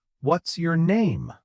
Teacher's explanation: My voice falls on name. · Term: falling intonation